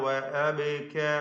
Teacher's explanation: ബാഇന്റെ സുകൂൻ ഖൽഖല നൽകി ശബ്ദം ചലിപ്പിച്ച് വ്യക്തമാക്കി ഉച്ചരിക്കണം